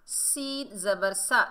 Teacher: सीन सख्ती और सीटी वाला हरूफ है